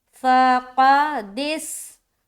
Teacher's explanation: قاف کو موٹا رکھیں گے، دس، دال کو سین سے ملاتے ہوئے سیٹی والی آواز ظاہر ہوگی، دس، تم، سکا، بالکل آسان۔